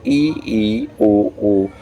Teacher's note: जिनके उच्चारण में मुख द्वार लगभग बंद रहता है